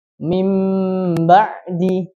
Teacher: Nah, yaitu apabila ada nun sukun atau tanwin bertemu dengan satu huruf saja, itu huruf ba, maka cara bacanya adalah diganti nun sukun atau tanwin tersebut menjadi huruf mim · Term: iqlab